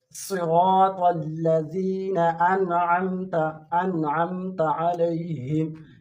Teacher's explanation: یہاں پر ہم نے غنہ نہیں کرنا کیونکہ نون ساکن کے بعد حروف حلقی میں عین آیا ہے. یہاں پر ہم نے غنہ نہیں کرنا بلکہ اظہار کرنا ہے.